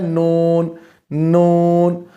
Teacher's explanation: سامنے والے 2 دانت ثنایا ادا کرتے ہیں، پھر رباعیات، پھر انیاب، ان کی جڑوں سے طرف لسان لگے، نون نون نون نون ادا ہوگا۔